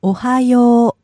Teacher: that last ooh at the end means that you hold it